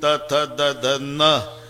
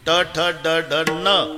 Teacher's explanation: नळ्याचा न उच्चारा तर जीभ दाताला स्पर्श करणार, बाणाचा न उच्चारा अजिबात दाताला लागत नाही, टाळूला